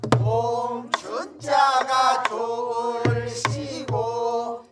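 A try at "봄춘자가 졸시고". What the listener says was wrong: 씌고가 아니라고 어떻게 자꾸 이상하게 만드네 봄춘자가 졸 씌고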